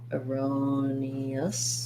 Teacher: So in erroneous, again, we have second syllable stress. Erroneous. So thinking about that like the word row.